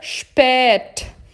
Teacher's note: Esse E aberto, ele pode ser também longo.